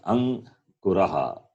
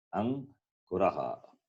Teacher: The first consonant is read along with the preceding vowel a